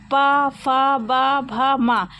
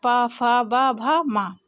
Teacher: ये ओट व्यंजन इसमें दोनों ओठ क्या होते हैं टच होते हैं